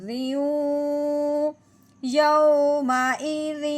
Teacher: اب یہاں بھی دیکھا ہے کہ تنوین کے بعد آگے مشدد حرف جو ہے، اب یہاں بھی ہم نے دیکھنا ہے کہ ادغام کا قاعدہ جاری ہو رہا ہے، یعنی کہ ایک حرف کو دوسرے حرف کے اندر ملانا ہے، وہ بھی مشدد کرتے ہوئے، یعنی کہ واو مشدد ہے۔ اب تنوین کو اب ہم نے واو مشدد کے اندر ملاتے ہوئے ادغام کرنا ہے